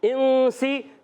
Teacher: نون ساکن کے بعد سین غنہ کریں گے، ایک الف کا اخفا غنہ کریں گے، سین سیٹی کے ساتھ